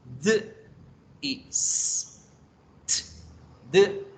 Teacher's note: se llaman sonidos alveolares porque la producción de estos sonidos se hace en esa partecita arrugada después de los dientes en los alveolos la puntita de la lengua toca allá y hacemos de its